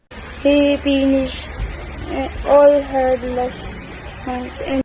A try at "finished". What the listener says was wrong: Hard consonant P is evident when he pronounced the word finish.